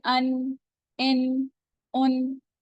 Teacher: नून का मखर है जबान की नोक